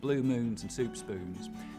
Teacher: I'll start off with very fronted goose vowels